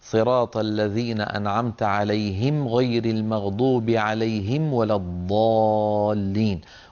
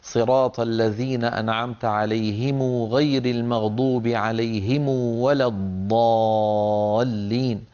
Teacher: كانت تضم هذه الميم وتشبعها وتصلها بواو، فيقولون صراط الذين أنعمت عليهم غير المغضوب عليهم ولا الضالين. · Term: ضم ميمات الجمع